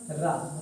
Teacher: लुंठित या प्रकंपित ध्वनि कौन सी होती है, जिनके उच्चारण में क्या होता है बच्चों? जीभ लुढ़कती है। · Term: लुंठित वर्ण